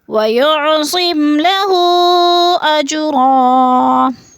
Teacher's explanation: اجرا میں قلقلہ ہو رہا ہے، جیم ساکن ہے اور حروف قلقلہ میں سے ہے تو اس کو ہلا کر پڑھنا ہے۔ اور اجرن کی 2 زبر تنوین وقف کی صورت میں 1 زبر میں بدل کر پڑھیں گے